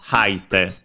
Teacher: As a reminder, the accent of the forms, if the verb is unaccented, it's also unaccented. When the verb is accented, it goes to the third to last syllable, so haite, on the ha.